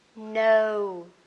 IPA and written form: nəʊ (know)